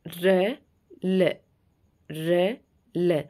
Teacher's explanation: फिर दंत मूल, यानी कि जो दांत हैं उसकी जो जड़ें होती हैं वो वाला हिस्सा मुर्दा से थोड़ा नीचे, दांतों से थोड़ा ऊपर, बीच का जो जगह होती है वहाँ से बोले जाते हैं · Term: दंत मूलक